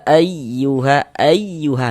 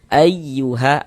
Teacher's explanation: intonasi suaranya itu sedikit lebih tinggi daripada huruf yang di sampingnya. Nah, kita kasih penekanan ya ayyuha ayyuha. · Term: nabar